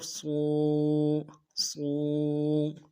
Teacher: موٹی ہوگی اور موٹا کرنے کے لیے زبان کا بیچ بھی اٹھائیں گے